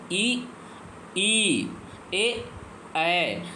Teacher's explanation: ये हमारे अग्र स्वर देखिए बोल के देखिए देखिए ये आगे जुबान के आगे वाले भाग से निकलते हैं